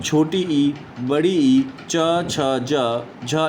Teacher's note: इनका उच्चारण जो है वह तालव्य से होता है